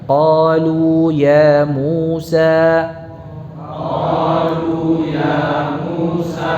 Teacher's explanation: Ini semua huruf madnya itu mad tabi'i. Ya, dipanjangkan hanya 2 harakat, tidak lebih.